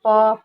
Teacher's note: तो प वर्ग का उच्चारण स्थान होगा दोनों होठ, ये प वर्ग दोनों होठों से बोलते हैं। इसके उच्चारण के लिए भीतर से आने वाली वायु को दोनों होठों से रोका जाता है, फिर वायु को बाहर निकाल दिया जाता है, यानी कि ये ओष्ठ पे जाएगा।